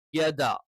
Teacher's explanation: യ നമ്മൾ പറഞ്ഞു നാവിന്റെ മധ്യഭാഗം അത് മേലെ അണ്ണാക്കിൽ ടച്ച് ചെയ്തുകൊണ്ടാണ്